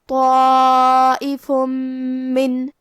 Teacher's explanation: میم حروف الادغام بغنہ میں سے ہے اور ادغام کا معنی ہے حرف کو حرف میں داخل کرنا. تو ہم یہ تنوین کو میم میں ملا کے غنہ اور تشدید کے ساتھ یہ حکم کو ادا کریں گے